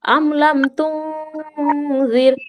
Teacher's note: র সাকিনের পূর্বে জের এসেছে, তাই এখানে রকে বারিক করে পড়তে হবে